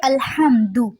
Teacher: دو کو لمبا نہیں کرنا، دال کی پیش کو